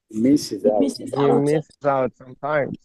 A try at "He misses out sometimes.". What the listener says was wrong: He misses out sometimes. Stress the particle, not the verb.